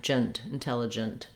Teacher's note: We go right from the J sound of the letter G, J, to the N